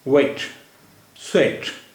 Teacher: तरह गोल करेंगे जैसे उ कहने जा रहे हैं लेकिन अब हम उ की आवाज निकाले बगैर और डब्लू के बाद जो शब्द में वावल आ रहा है उस पर आ जाएंगे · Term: डब्लू की साउंड